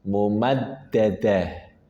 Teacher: fi amadin fi amadin fi amadin fi amadin fi amadin fi amadin kemudian kata berikutnya mumaddadah ada dalal bertasydid pastikan ada nabrah atau penekanan mumaddadah mumad Kemudian diakhiri dengan ta marbutah. Ketika dia sukun maka dia berubah menjadi ha. Dan pastikan keluar dari tenggorokan bawah atau pangkal tenggorokan.